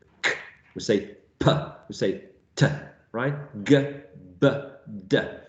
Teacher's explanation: There's a full block of the airstream and then a sudden release. So there is a puff of air coming from the mouth. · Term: plosive sounds